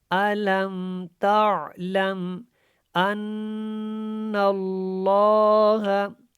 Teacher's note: نون کے اوپر شد ہے، یہاں پہ غنہ کریں گے، اور نون کو جب لام کے ساتھ ملائیں گے تو لام کو جو ہے کھڑا کر کے اور موٹا کر کے پڑھیں گے۔